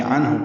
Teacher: عنہ میں نون ساکن کے بعد ہا حروف اظہار میں سے آ رہا ہے